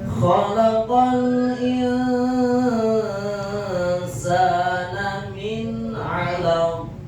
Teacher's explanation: Kalau qaf tetap terjadi qalqalah karena huruf yang diwakafkannya huruf qalqalah yakni huruf qaf